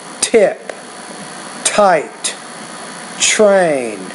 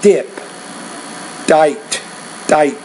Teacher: you need to pronounce the the T with more air